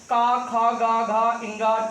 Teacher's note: का वर्ग बोला जाता है कंठ से